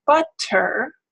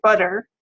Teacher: we just say butter, where it's produced as a flap